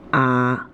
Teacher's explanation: of the third tone has a pitch value of 214 however in natural speech it almost always occurs as a low flat tone with a pitch value of 21